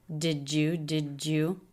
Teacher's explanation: did you combine again to make a J sound